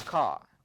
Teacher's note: r is not pronounced this phenomenon is known as non-roticity